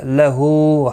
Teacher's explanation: ہا کے اوپر الٹا پیش ہے، ایک الف کی مقدار کے برابر کھینچ کر پڑھیں گے